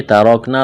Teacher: ترکنا را کو موٹا کرنا ہے